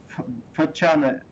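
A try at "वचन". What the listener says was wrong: Не надо растягивать вачана. Вачана. Вачана.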